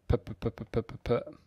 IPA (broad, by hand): pə pə pə